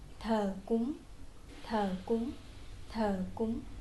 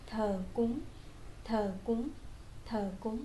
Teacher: However, you have to raise your voice a little bit to pronounce the word cúng.